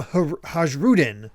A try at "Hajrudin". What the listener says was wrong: I think the J is silent. So I think it's Harudin. Yeah, I checked the wiki based on how it's spelled in Japanese. I think because it's like Norse, right? So I think the J is silent.